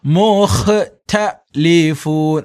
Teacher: ഒരല്പം കാറ്റ് ഇങ്ങനെ തള്ളുന്നത് പോലെ ആയിരിക്കണം തനെ ഉച്ചരിക്കേണ്ടത്